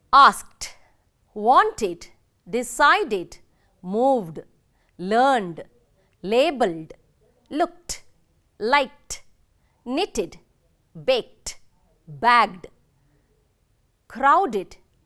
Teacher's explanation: Note the past marker ed getting pronounced as t, d, id.